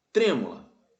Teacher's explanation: a anti penúltima sílaba é mais forte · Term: proparoxítona